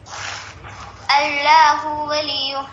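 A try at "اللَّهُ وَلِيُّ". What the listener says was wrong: نہیں, اللہ ہوا. بالکل ویسے ہی جب ولی کہیں تب بھی ہو کو نہ کھینچیں. اللہ ہوا اللہ ولی. ایسی کوشش کریں کہیں پر بھی زبر زیر پیش کو نہ کھینچیں نہ کھینچیں.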